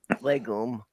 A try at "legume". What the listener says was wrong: No, legume with the Y sound.